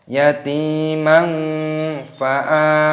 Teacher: fathah tanwin bertemu dengan fa hukumnya dibaca ikhfa disamarkan. Yatimang fa'a dipanjangkan a-nya, ada tanda alifnya matabi'i.